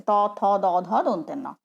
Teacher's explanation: ত থ দ ধ দন্তের ন, বা মানে দাঁতের সামনে তো জিভ আসতে পারে না, জিভের ভেতরের অংশটা দাঁতের ভেতরের অংশকে স্পর্শ করছে, জিভের সামনের অংশটা দাঁতের ভেতরের অংশকে স্পর্শ করছে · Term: দন্তবর্ণ